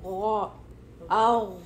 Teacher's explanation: غین تھوڑا heavy letter ہے, meaning کہ آپ کا جو ٹنگ ہے نا اس کی بیک تھوڑی اوپر ہوئے گی, اور آپ کو ماؤتھ میں لگے گا کہ تھوڑی جیسا ہوا بھری ہوئی ہے.